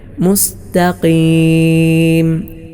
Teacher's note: കാഫിനെ അമിതമായി ശക്തമായി ഉച്ചരിക്കാറുണ്ട് അങ്ങനെ വേണ്ടതില്ല